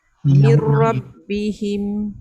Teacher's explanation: Idgham saja tapi tak dengung.